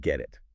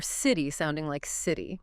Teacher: When a T sound comes between two vowel sounds, it often softens. It sounds less like a sharp t and more like a soft d or even sometimes a quick r sound. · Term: flap T